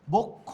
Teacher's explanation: শব্দের শেষে যুক্ত ব্যঞ্জন থাকলে শব্দের অ এর উচ্চারণ ও এর মতো হয়।